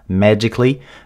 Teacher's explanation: La façon dont il prononce magically est différente du standard aussi parce qu'il va prononcer avec un E, magically.